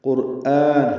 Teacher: قرآن حمزہ کی آواز نکلے، کھڑا زبر ہے، 2 حرکات لمبا کریں گے